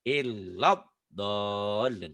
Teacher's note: La-nya matobinya kan pendek karena ketemu huruf bertasydid.